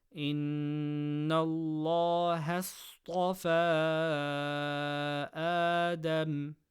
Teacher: Noon mushaddada gunna. Lam of Allah after fatha, full mouth. Sad from khussa daghatin qidh, full mouth. · Stretch letter before hamza in the next word. Mad munfaṣil, 4 harakas.